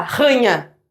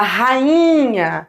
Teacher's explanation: Para essa vogal ser forte, não se tornar uma semivogal, esse i, você tem que deixar ele separado, isolado, numa sílaba só.